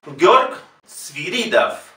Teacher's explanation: la O no tiene acento, no es la sílaba tónica, por lo tanto se pronuncia A